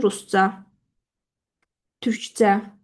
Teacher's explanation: Türkcədən vurğu düşür ü hecasına